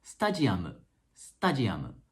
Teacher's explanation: the middle sound stadium becomes da Jia mo and that's because there isn't a natural D sound in Japanese